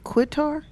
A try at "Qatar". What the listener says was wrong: Yeah, it's pronounced, but don't pronounce the Q that way. I think it's another way you say it. Yeah, Qatar.